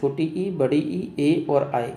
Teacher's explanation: अग्रभाग में देखें तो छोटी ई, बड़ी ई, ए और आई, ये अग्रभाग से यानी कि जीव के आगे वाले भाग से इनका उच्चारण होता है